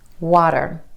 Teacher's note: The flap T is really just a D sound, and this flap T happens when T is in the middle of words in between 2 vowel sounds